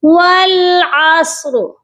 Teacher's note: را جو ہے عین کی حرکت کے ساتھ ساکن ہو کر پڑھا جا رہا ہے، ٹھیک ہے، تو یہاں پر را کو ہم نے پر پڑھنا ہے